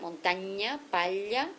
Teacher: Le iode va palataliser le N et le L